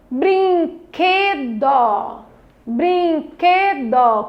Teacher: O que do brinquedo foi a sílaba tônica.